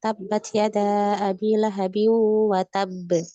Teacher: Ditahan dulu tasydidnya baru dilepas qalqalahnya